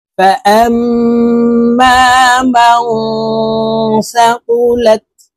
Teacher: ফাআম এখানে ওয়াজিব গুন্না, হারকতের বামে মিমের উপরে তাসদীদ আছে। তো এই হামজা তাসদীদওয়ালা মিমের সাথে নাকের বাসি থেকে গুন্নাহ করে পড়ব।